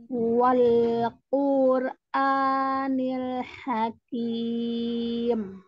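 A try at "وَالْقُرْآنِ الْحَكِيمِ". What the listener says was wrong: Wawnya jangan ditekan. Wal jam itu, tapi lembut saja. Wal, Wal-Qur'an, wal itu. Hakim.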